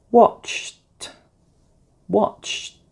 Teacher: CH is a ch sound, which is an air sound. Therefore, ed sounds like t.